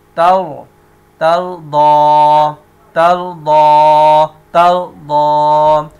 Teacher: اب را ساکن ہے، را ساکنہ سے پہلے والے حرف کے اوپر زبر ہے تو را کو پر پڑھیں گے